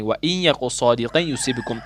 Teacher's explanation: تنوین کو جو قاف ہے اس کو یا کے ساتھ ملانا ہے، یا مشدہ کے ساتھ ملانا ہے اور ایک الف کے برابر ناک سے گنا ہو کر پڑھنا ہے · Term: ادغامی باگنا